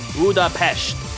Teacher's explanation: the original Hungarian pronunciation is budapesh with an sh sound, the English convention retains the s.